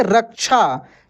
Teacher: बीच में ये छ आता है तो स्पष्ट रूप से आधा क का उच्चारण होता है।